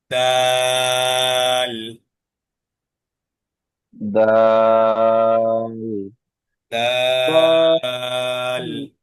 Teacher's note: জিহ্বার আগাটা উপরের দুই দাঁতের গোড়াতে, উপরের সামনের দুই দাঁতের গোড়াতে লাগবে।